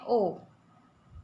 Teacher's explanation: कंठ और ओट की सहायता से हम बोलते हैं ओ